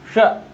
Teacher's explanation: मुड़ के आएगी ऐसे और तालू में टकराएगी। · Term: तालव्य सा